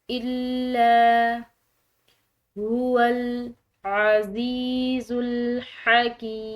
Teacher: زبر کی وجہ سے اس کو لمبا ادا کیا ہے، الا، مشدد لام ہے تو دباؤ سے ادا کریں گے